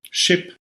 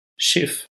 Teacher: By the way, in High German, sort of in the southern varieties of German, there is another change, an additional sound change that shifts final P's into F's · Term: second consonant shift